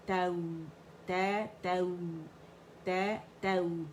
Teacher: فتح کے لیے آواز اوپر گئی دونوں صورتوں میں, اور نرمی سے پھر واو یا سے ملے گی · تا کی آواز ایک کاؤنٹ کے لیے اوپر گئی, کچھ سے فتح ہے اور واو ساکن ہے, تو جب بھی واو ساکن سے پہلے فتح آئے گی یا ساکن سے پہلے فتح آئے گی تو لین ہے, یہ دو لیٹر لین بنیں گے, واو لین یا لین.